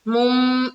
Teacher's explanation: यहाँ पर इकलाब का कायदा हो रहा है, तो मीम को मीम से मिलाएंगे